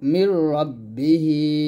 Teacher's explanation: মিমকে আমরা রস দিয়ে মিলাবো